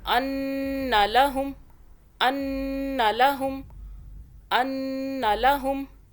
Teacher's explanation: ان، اب یہ نون مشدد میم مشدد کو بھی یاد رکھیں، اس کے اوپر ڈبلیو سی ہے، اس نون مشدد پہ بھی گنہ کریں گے 2 سیکنڈ کا